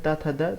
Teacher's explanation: तो जब त बोलते हैं त थ द तो हमारा बार-बार जीभ जो है दांत में टच करता है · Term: दंत वर्ग